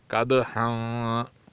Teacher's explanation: دال پہ کلکلہ کیا جائے گا کیونکہ یہ دال ساکن ہے اور حروف کلکلہ میں سے ہیں، قطب جدن میں سے ہیں، اس لیے اس پر کلکلہ کیا جائے گا۔